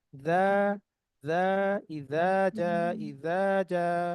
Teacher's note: প্রথম দাটা নরম হবে, কোথায় লাগবে, জিহ্বার আগা দাঁতের আগা লাগবে। যা, যা, ইজা, যা, ইজা, যা, জিহ্বার আগা দাঁতের আগা, জিহ্বার সামনের অংশটা মানে টিপ অফ দ্য টাং, এটা হচ্ছে আমাদের আহ জিহ্বাটা আছে না, এই যে একদম সামনে যে বড় বড় দাঁত আছে সেটাতে ধারালো অংশে লাগবে এখানে।